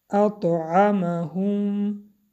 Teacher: اط حرف تا با سکون قلقله